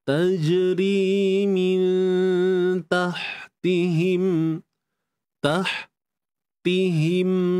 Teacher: Ha tengah kerongkong, kita sempitkan dia